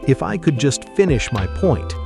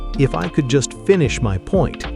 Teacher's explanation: Tone of voice. Your voice must go down at the end. Wrong. If I could just finish my point. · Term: Falling intonation